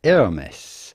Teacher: do not insist on the h which is not really pronounced in french so do not necessarily say hermes but rather hermes the s